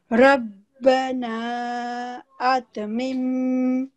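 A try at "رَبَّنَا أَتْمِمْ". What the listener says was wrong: ٹھیک ہے مم پہ نہیں رکنا ہم نے بس مم کو صرف جوائن کرنا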